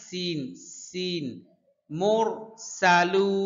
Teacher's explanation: সিন উচ্চারণ করতে গেলে মাছ ভাজলে যেরকম আওয়াজ হয় ওইরকম হবে